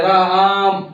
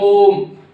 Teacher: इसको 3 गुना समय लगता है, इसे हम खींच कर बोलते हैं। जैसे किसी शब्द को खींच दें, जैसे राम, आ रहा है ना, आ को खींच रहे राम, तो ऐसे हो गया। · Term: प्लुत स्वर